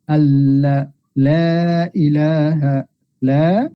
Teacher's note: জিব্বার আগা সামনের যে ফ্রন্ট যে দাঁত আছে দাঁতের মাড়ির সাথে লাগিয়ে আমরা লাম উচ্চারণ করব